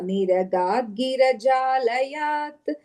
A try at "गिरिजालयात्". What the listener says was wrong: That first line is Giri. I think you said Gira or something. Yeah, second line, yeah.